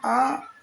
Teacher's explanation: तो ये आ और बड़ा आ का उच्चारण स्थान कंठ है